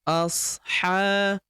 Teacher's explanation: huruf H kita panjangkan 2 harokat karena terdapat tanda alif kecil di atasnya